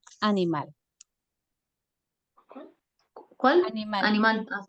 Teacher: dónde suena más fuerte en mal verdad Entonces por lo tanto tiene su acento en la última sílaba es aguda